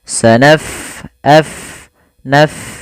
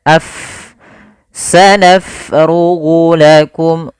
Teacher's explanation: Pada lafal bacaan sanafrugu, fa-nya kita alirkan nafasnya